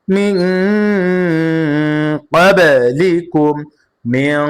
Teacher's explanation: নুন সাকিনকে গুণনা করেছি কেন? কারণ নুন সাকিনের পরে কফ আসছে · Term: ইকফার